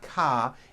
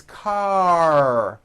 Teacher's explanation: it's car your tongue has to pull back car and also your lips close a little bit in the front the r needs to be very strong and you need to close the word car let's practice these